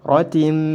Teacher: Idgham dimasukkan tanwinnya ke dalam huruf mim, kemudian ditahan 2 harokat disertai dengan gunnah. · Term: idgham bi gunnah